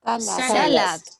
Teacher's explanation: Cargamos la voz en la primera sílaba. Ahí muy sutilmente está ahí subrayado el sa, ¿cierto?